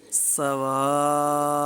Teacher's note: सीटी की आवाज़ आएगी, मद का ख्याल करते हुए दराज करेंगे। यहाँ पर गुन्ना नहीं करेंगे।